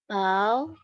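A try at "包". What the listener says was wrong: Ya, diayun dikit ya, Bu. Jadi diayun tuh maksudnya full karena dia baca tunggal nada 3. Pau. Ya, turunnya terus belakangnya full.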